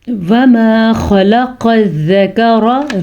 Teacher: را کو پر پڑھیں گے کیونکہ را کے اوپر زبر ہے